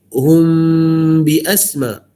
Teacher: Yang nun mati dengan ba kita renggang, mim mati dengan ba kita rapat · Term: ikhfa syafawi